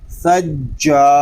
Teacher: جیم یہ زبان اور تالو کے درمیان والے حصے سے ادا ہوگا. جب ہم جیم کو ادا کریں گے تو آواز منہ میں پھیل جائے گی